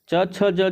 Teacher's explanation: इन सभी को कहेंगे तालव्य वर्ण क्यों क्योंकि इनका उच्चारण स्थान क्या है तालु है · इनका उच्चारण स्थान क्या है? तालु है। इस वजह से इन सभी वर्णों को बोला जाएगा तालव्य वर्ण।